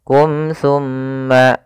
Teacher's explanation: tumma ada mim mati bertemu ta hukum tajwidnya yaitu izhar syafawi suara mimnya harus dibaca dengan jelas dan tidak boleh ditahan · Suara mimnya harus dibaca dengan jelas dan tidak boleh ditahan. Summa, kembali lagi pada lafal summa ada bacaan gunnah, ditahan suara nya sepanjang 2 harokat baru dilepas. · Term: idhar syafawi